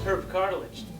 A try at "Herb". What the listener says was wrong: Actually, it's Herb. The H is silent.